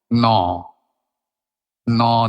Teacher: জীবটা গিয়ে দাঁতের গোড়ায় ঠেকছে। এবং তারপরে আর বাধা দেয়ার জায়গা নেই ঠোট ছাড়া।